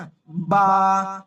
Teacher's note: বা হচ্ছে উভয় ঠোঁটের ভিজা অংশ থেকে